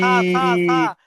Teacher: এই সাটা সা উচ্চারণটা সা জিভের আগা, সামনের উপরে দুই দাঁতের আগার সাথে লাগিয়ে উচ্চারণটা করেন।